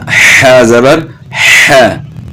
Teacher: ح پڑھنا ہے، گلے کے درمیان سے آواز نکالنی ہے